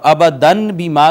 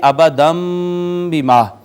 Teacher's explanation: تو ناظرین آپ دیکھیں کہ ابدن یہ جو نون تنوین اس کے اندر ہے، اس کے بعد آگئی با، با نے ما قبل کو چھوٹی میم سے بدل دیا نون تنوین کو۔ اب ابدن بما کی بجائے ہم پڑھیں گے ابدم بما۔ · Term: اقلاب